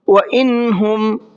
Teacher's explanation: وَإِنْهُمْ، یہاں پر نون ساکن ہے اور اس کے بعد میں ہا ہے، جو اظہار کے 6 حرفوں میں سے ایک حرف ہے، تو نون ساکن کو ظاہر کر کے پڑھیں گے، غنہ اخفا کچھ نہیں کرنا ہے